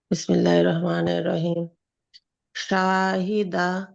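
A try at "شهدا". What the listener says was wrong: হুম শাহ কেন টান দিলা টান দেওয়া যাবে না প্রথমটাতে টান দিচ্ছ যদি আলিফ থাকে তাহলে টান দিবা আদারওয়াইজ টান দিবা না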